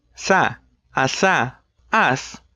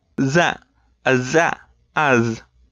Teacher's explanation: the alveolar fricatives, voiceless and voiced. You know the drill, tongue on the ridge.